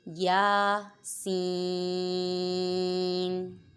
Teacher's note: یا پہ الف مدہ ہو رہا ہے، اس سے لمبا کریں گے۔ آگے سین پہ یا ساکن سے پہلے زیر ہے یا مدہ، اس کے بعد سکون اصلی تو یہاں پہ مد لازم ہوگا۔